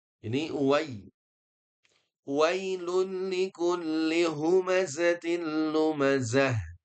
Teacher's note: hanya pastikan di sini wai ya, jangan sampai ke imalah.